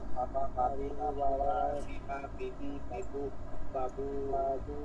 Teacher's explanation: ঠোঁটের ভিজা জায়গা দিয়ে একদম বাংলায় বা যেটা আছে ব আছে সেই উচ্চারণটা খালি ভ করবো না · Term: ব উচ্চারণ